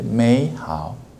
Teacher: The first third tone will change as a second tone